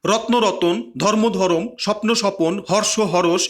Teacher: সময় সময় উচ্চারণের সুবিধার জন্য সংযুক্ত ব্যঞ্জন ধ্বনির মাঝখানে স্বরধ্বনি আসে, একে বলা হয় মধ্য স্বরাগম বা বিপ্রকর্ষ বা স্বরভক্তি বা অ্যানাপটাইসিক্স।